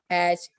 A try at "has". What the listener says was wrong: हैज, ज बेटा ज, जिंदगी वाला ज।